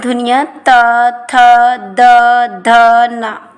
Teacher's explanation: जिन ध्वनियों का उच्चारण ऊपर के दांतों पर जीभ लगाने से होता है उसे दंती धुनिया कहते हैं जैसे ता वर्ग की व्यंजन ध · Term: दंती ध्वनियां, दंतीय ध्वनियाँ